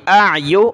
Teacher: حمزہ عین زبر حمزہ کی آواز آئے پھر عین کی